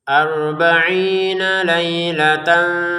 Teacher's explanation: Ada unsur nunnya. Jadi ada unsur dengungannya tapi tidak sebesar mim bertasydid ya untuk dengungannya. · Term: samar